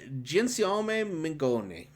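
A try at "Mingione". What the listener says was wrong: Gianciome Mione. No G. You don't pronounce the G. Mione.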